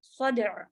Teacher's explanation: دال پہ جو ہے وہ ہلکی سی والی قلقلہ والی آواز دیتے ہوئے عین کو ساکن